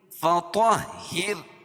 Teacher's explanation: طا کو موٹا اور را کو باریک.